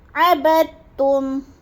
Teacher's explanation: اب عبدتم میں دیکھیں با کو ہم نے تا مشدد کے ساتھ ملا کر ادغام کرنا ہے، ادغام بلا غنہ، بغیر غنے کے ادغام. عبدتم یعنی جو درمیان میں دال ساکن ہے اس کو نہیں پڑھیں گے، با کو تا کے ساتھ ملا کے